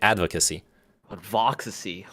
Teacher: so the accent is on the first syllable